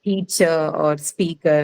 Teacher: the last suffix er which is essentially the schwa sound that doesn't take any stress okay that's called an unstressed vowel so obviously no stress on